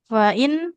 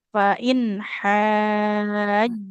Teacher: Fain nunnya enggak boleh memantul.